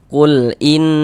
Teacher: Karena dia ghunah, maka cara membacanya dighunahkan atau didengungkan. Nah, jadi di bagian inah suaranya itu kita tahan, kita panjangkan sejenak. Innalah nanya pendek ya. · Jadi di bagian in, suara itu kita tahan, kita panjangkan sejenak. Innal, nanya pendek ya, innya yang kita tahan, kita gunnahkan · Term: ghunah musyaddadah, gunnah musyaddadah